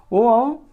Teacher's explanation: ओ और औ का उच्चारण स्थान कंठोष्ठ में, यानी कंठ और ओष्ठ से हो जाएगा